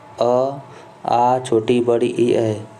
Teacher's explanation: जिन स्वरों के उच्चारण में ओठ वृत्तमुखी या गोलाकार नहीं होते वह अवृत्त स्वर होते हैं, जैसे अ, आ, छोटी, बड़ी, ई, ए।